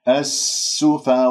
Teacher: السين من أحرف الصفير ويجري فيها الصوت ويجري فيها النفس